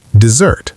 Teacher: Desert as a verb is pronounced desert. The stress shifts to the second syllable, zert. Desert. The first syllable becomes shorter and lighter, and the second syllable gets the emphasis.